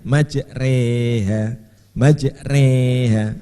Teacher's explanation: Jadi imalah itu mencondongkan alif mendekati kasroh.